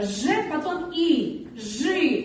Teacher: Пишем и, а произносим мы. Ж звук всегда будет твердый.